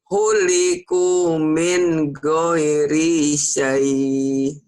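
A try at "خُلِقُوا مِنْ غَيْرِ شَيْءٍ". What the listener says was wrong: Bagus, tapi goirinya pendek, Bu. Khuliqu min ghairi syai. Ghairi syai.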